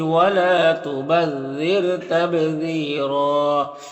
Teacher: وقف کی صورت میں ایک زبر کے ساتھ الف پڑھیں گے اور را کو پر پڑھیں گے